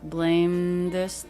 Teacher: the voiced TH in an unstressed word can be made without the tongue tip coming through